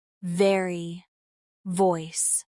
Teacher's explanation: The V sound is made by placing your top teeth gently on your bottom lip and vibrating like in very and voice.